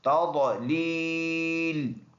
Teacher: ضاد موٹے حروف میں سے ہے، منہ بھر کر پڑھنے والا